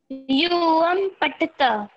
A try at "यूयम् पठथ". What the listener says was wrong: पठत नहीं पठत केवल पठथ पठत पठ थ केवल थ हाँ हाँ थ रहेगा केवल, उस पर विसर्ग नहीं रहेगा, ठीक है।